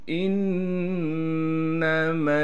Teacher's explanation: نون پر تشدید ہے اور تشدید ہونے کی وجہ سے نون میں غنہ کریں گے